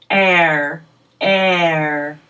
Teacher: My mouth is open the most for this sound, air. Really gets wide to make this loud sound, air. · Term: air sound